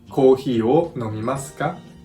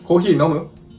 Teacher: for the plain style, we simply raise our intonation at the end of the plain style, noun, adjective, or verb. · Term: rising intonation